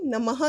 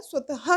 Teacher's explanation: विसर्ग का उच्चारण हम ह की तरह समान करते हैं